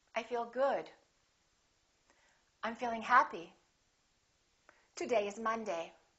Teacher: making sure that your voice goes down at the end that your pitch goes down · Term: intonation